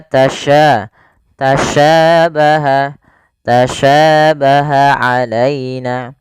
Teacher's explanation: sya ini bagaimana cara pelafalannya dari tengah lidah kita karena makhrajnya dari tengah lidah sya dan sya memiliki sifat namanya tafasy Tafasiyi itu intisarus fil, yaitu menyebarnya suara di mulut. · sya memiliki sifat namanya tafasy Tafasiyi itu intisarus fil, yaitu menyebarnya suara di mulut. Maka tasya tasyabaha tasyabaha alaina.